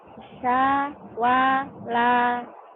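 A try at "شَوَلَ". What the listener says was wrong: Shin. Utangmu itu ya. Sya. Shh. Shh. Angin besar. Sya. Sya. Syawala. Utang shinnya.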